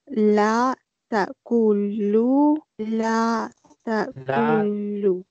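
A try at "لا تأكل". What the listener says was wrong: kul not dhamma la ta'kul sukoon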